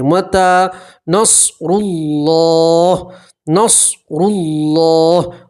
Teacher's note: متا نصر اللہ، اللہ کے لام سے پہلے پیش ہے، اللہ کا لام پور پڑھیں گے، موٹا پڑھیں گے، اور ہا کے اوپر وقف کریں گے تو ہا کے اوپر آپ جزم پڑھیں گے۔